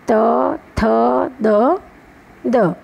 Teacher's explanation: દંત્ય વ્યંજનો. જીભનો આગળનો ભાગ દાંતના ઉપલા ભાગને સ્પર્શે. જીભનો જે દાંત આગળનો ભાગ હોય એ આપણા દાંતના ભાગને દાંતને અડકે ત્યારે ત, થ, દ, દ.